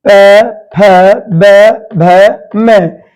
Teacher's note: इसमें हमारे होंठ काम करते हैं। इन्हें बोलते हैं ओष्ठीय व्यंजन।